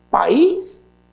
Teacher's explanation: Tem hiato, mas aí é uma oxítona. A última é mais forte.